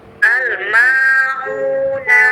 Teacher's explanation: yang al-ma'una, ma-nya panjang, huruf u panjang juga. Al-ma'una. Panjang huruf ma-nya 2 harokat ya, 2 ketukan ya.